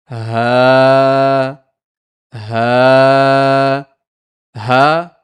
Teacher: سینے حلق کے سینے کی طرف والے حصے سے ہا بھاری کر کے نکالیں گے